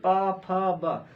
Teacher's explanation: हमारे जो होंठ हैं, जो दोनों होंठ हैं वो आपस में टकरा जाते हैं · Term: ओष्ठ